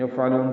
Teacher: عین وسط حلق سے ادا کریں گے، لام کو لمبا کریں گے، باریک پڑھیں گے، نون ساکن پہ اظہار ہوگا